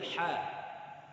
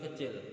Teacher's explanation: Kalau ha yang kecil itu keluarkanlah di tenggorokan tengah.